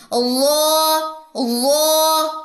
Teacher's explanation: وا میں بھی سیٹی نہیں ہوتی لیکن یہ موٹا لیٹر ہے، اقصی لسان اٹھے گی، زبان کی جڑ اوپر کی طرف اٹھے گی